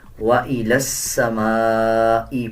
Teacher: لام کو سین کے ساتھ ملا کے پڑھا جائے گا